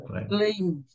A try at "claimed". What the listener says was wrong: Claimed. Claimed. Claimed. Tem que falar ele. Você está falando só o claim? O claim é o verbo, né? O verbo é a base. Mas aqui não. Claimed.